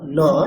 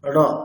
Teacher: জিভটা হচ্ছে একেবারে দাঁতের ওখানে টাচ করলে হচ্ছে দন্তীয় ন, ন, আর জিভটা একেবারে তালুরও পিছন দিকে, মানে উপরের যে প্লেট আছে আমাদের সবচেয়ে পিছন দিকে টাচ করে যেটা আমরা উচ্চারণ করছি ওটা ণ, মূর্ধন্য ন, ণ।